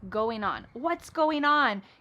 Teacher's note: Again, we're dropping the g